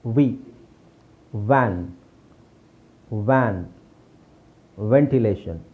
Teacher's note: ಇದೆ ವ ಇದೆ ವಿ ವೇ okay so ವಿ ಅಂತ ಬಂದ್ರೆ ನಾವು ವಿ ಅಂತ ಹೇಳಬೇಕು ಈ ಕೆಳಗಡೆ ತುಟಿ ಒಳಗೆ ಹೋಗಬೇಕು